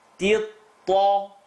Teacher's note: Now ta is light, but the ta with the shadda, heavy letter.